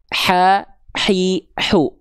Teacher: ketika kita melafakkan H kecil katup epiglotis inilah yang bergerak menyempit ke arah dinding tenggorokan